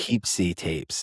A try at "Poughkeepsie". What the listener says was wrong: Poughkeepsie. Poughkeepsie. I think you're putting too much emphasis on the poo. Just let it roll off your tongue.